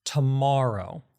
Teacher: the ma part of the word is longer than the other parts of the word and it's [clears throat] louder than the other parts of the word. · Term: stress